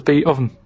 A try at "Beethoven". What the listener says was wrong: Beat Oven. No, you said beat. No, Beat Oven. It's not Beethoven.